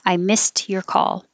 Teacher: the E-D here sounds like a T.